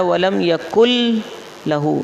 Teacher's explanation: یہ جو نون ہے نا لام میں مدغم ہو گیا، داخل ہو گیا. اس طرح داخل ہوا کہ وہ اپنا وجود کھو بیٹھا، آواز نہیں آئے گی، لکھا جائے گا باہر. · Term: ادغام